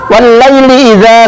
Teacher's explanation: Syamsiah hukum bacaannya disebut Idgham Syamsiah atau termasuk huruf lam syamsiah cara membacanya harus dimasukkan atau diidghamkan kepada huruf Syamsiah atau dengan kata lain tulisannya tetap ada tetapi tidak dibaca alif lam nya